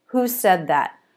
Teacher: It's a question, but you can't answer it with yes or no, so the pitch goes down.